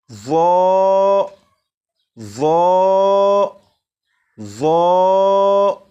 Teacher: اب اسے پڑھتے ہوئے 2 باتوں کا خیال رکھیں گے۔ نمبر 1، زبان دانتوں سے بھی لگے۔ نمبر 2، آواز کو بھی موٹا کر کے پڑھیں گے۔